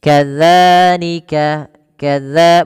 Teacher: Yaitu ujung lidah kita, ujung lidah menempel dengan gigi seri. Nah, maka dia ditempelkan. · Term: huruf zal